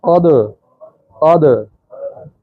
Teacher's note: दाल अदा करते हुए जुबान जहाँ लगती है लग के फौरी हट जाएगी तो कलकला पैदा होगा